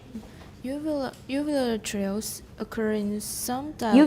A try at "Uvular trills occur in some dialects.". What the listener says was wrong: Uvular trills, it's not a compound.